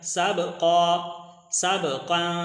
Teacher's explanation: سب با کے اوپر قلقلہ ہے